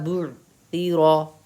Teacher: تا میں سین کی آواز نہیں نکالنی ہے، تا کو نرم آواز سے پڑھیں